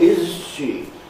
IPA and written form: ˋɪz ʃi (is she)